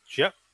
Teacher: the intensifying adverb, jia, with a glottal stop, and again, extra high tone, always occurred after the verb. It's phonologically independent, but grammatically dependent.